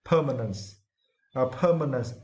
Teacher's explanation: for this word, you need to stress the first syllable